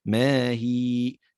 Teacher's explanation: عند الوقف على الكلمة تتحول الياء المفتوحة هذه إلى ياء مادية، لأنها تكون ساكنة وما قبلها مكسور، فيجب عند الوقف عليها أن تمد بمقدار حركتين